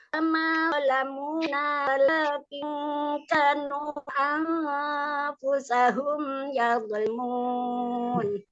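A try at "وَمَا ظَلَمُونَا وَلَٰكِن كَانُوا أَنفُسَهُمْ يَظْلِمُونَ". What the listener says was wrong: Nunya kurang panjang tadi kan. Yang terakhir kanunya pendek banget tuh. 5.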